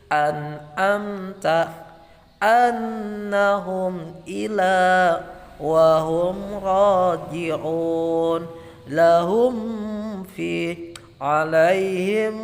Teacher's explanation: Bacanya bunyi mim sukun dibaca jelas dengan bibir tertutup. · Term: izhar sapawi